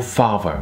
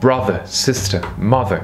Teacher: La première syllabe est accentuée, la syllabe far. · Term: accent tonique